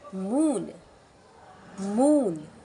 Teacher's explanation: the tongue is high and towards the back of the mouth